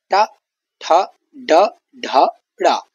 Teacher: तो ट का जो उच्चारण स्थान है वह आपका मूर्धा है। मूर्धा ट का उच्चारण स्थान है। · जीभ की नोक तालु से ऊपरी भाग से टकराती है, यानी जीभ की जो नोक है वो तालु के ऊपरी भाग से टकराती है, यानी तालु के हल्का नीचे, जो बीच का हिस्सा है उसके हल्का नीचे टकराती है। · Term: मूर्धन्य वर्ण